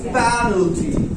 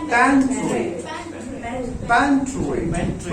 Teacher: आपको पैन पे है तो पैन पे जोर देना है, बाकी को ढीला छोड़ देना है